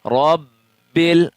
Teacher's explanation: با میں جمع والا قلقلہ کریں گے